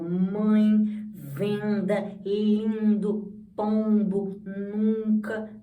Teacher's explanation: Então, é a vogal que vem acompanhada ou do tio ou de um M e um N posteriormente. Aí a gente vê que ele tem um som mais anasalado. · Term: vogais nasais